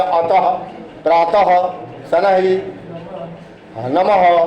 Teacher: विसर्ग का उच्चारण ह के समान होता है। इसका प्रतीक चिन्ह है, वर्ण के आगे 2 बिंदी लगा देते हैं।